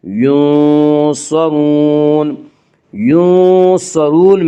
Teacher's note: را کے اوپر پیش ہے اس لیے را کو پر پڑھیں گی۔ ینصرون، ینصرون میں مد عارض وقفی ہوگا۔